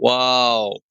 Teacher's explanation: دونوں ہونٹ گول کر کے نہ تمام بند کرنے سے اس کی ادائیگی واو کی ادائیگی ہوگی